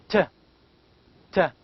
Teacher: The tongue touches, see, the alveolar ridge, and here the velium, see, closes the nasal cavity.